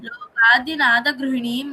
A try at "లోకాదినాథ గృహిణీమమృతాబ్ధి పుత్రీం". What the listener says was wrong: అమృతాబ్ధి పుత్రీం. స్పష్టంగా వినిపించాలి. అక్కడ మమ్రు అని కాకుండా మము అన్నట్లు చదివావు ఇందాక.